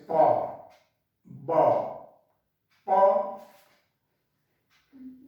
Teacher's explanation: Lower lip और upper lip, यानी इसमें जो है एक्टिव और पैसिव दोनों रूप में आता है, अपर और लोअर लिप।